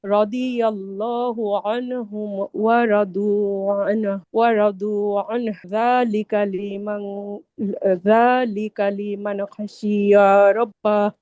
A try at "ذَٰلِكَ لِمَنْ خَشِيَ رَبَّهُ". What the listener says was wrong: খসি সিনে টান হবে না, খসিয়া রব্বাহ।